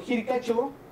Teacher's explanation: utilizamos nosotros el quechua de Ancash, el sufijo chao, que se pronuncia como cho, por la monoptongación